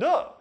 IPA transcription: d